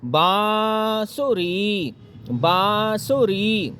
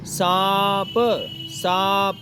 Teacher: चंद्र बिंदु को बोलते समय उच्चारण करते समय आदी हवा नाक में और आधी हवा मुंह में निकालनी होती है